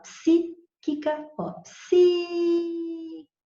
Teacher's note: você vê que são 3 sílabas, a antepenúltima é tônica, então ela é proparoxítona